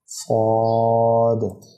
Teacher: صاد کو پر پڑھنا ہے، صاد، منہ بھر کے، پر سے مراد میری یہ ہے کہ منہ بھر کے ادا کرنا ہے اسے، صاد۔ واد کو بھی منہ بھر کے پر کر کے ادا کرنا ہے، واد واد۔